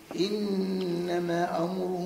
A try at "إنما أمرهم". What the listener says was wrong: إنما زيد شوية في المد واعمل غنة النون.